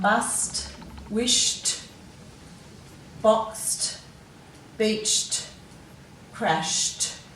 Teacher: So you're hearing that t, but you know you're writing ed on the end of them.